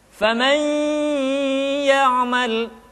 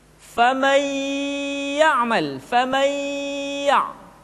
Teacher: Kemudian yang kedua, masukkan ke hidung. Karena gunnah, tempat keluarnya adalah al-khayshum atau rongga hidung.